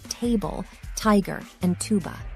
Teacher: this sound is similar to The unvoiced Dental plosive but with a stronger puff of air that follows the sound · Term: aspirated, aspirated T